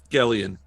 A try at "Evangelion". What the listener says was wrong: It's a soft G. It should be Jellion.